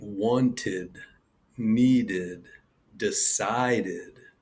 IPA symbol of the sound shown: ɪd